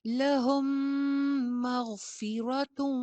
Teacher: فا کے نیچے زیر ہے، اس کو باریک ادائیگی ہوگی